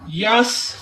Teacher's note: ला यस या को सीन के साथ जब हमने मिलाया तो यस बगैर खींचे पढ़ेंगे। सीन को सीटी की आवाज देते हुए यस को अदा करना है।